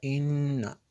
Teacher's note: یہ جو غنہ ہے یہ نون میں شدت کی وجہ سے یہاں پہ ہم نے غنہ کیا، ان ایسے پڑھا۔